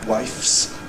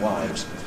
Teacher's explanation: various Scottish and other people sometimes saying ‘wifes’ /waɪfs/ rather than ‘wives’ /waɪvz/